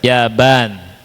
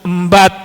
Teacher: Nah, itu jadi P enggak ada dalam bahasa Arab diganti ba ya.